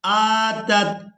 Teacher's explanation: حمزہ کو کھڑی زبر کی وجہ سے کھینچ کر ادا کریں گے